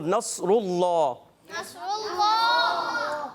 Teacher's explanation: اللہ کے لام کو پر کریں گے, کیونکہ اللہ کے لام سے پہلے پیش آ گئی